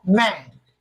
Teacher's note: N is bilabial nasal. Its production involves the coming together of the lips, and air goes out through the nasal cavity.